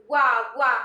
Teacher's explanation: हमारा ओठ काम करता है, दांत और ओठ। तो क्या हो गया, दंत ओष्ठ।